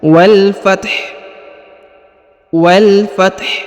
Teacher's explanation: setelah disebut huruf ta Fath ditekan dan dibunyikan huruf ha tipis · ditekan dan dibunyikan huruf ha tipis ya Wal Fath Wal Fath jadi ada hembusan tipis dari huruf ha ya karena huruf ha di ujung juga diberikan harakat sukun